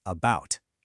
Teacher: No, we put the stress on the second part about. And because that first a is unstressed and weak, it turns into that lazy schwa sound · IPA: /ə/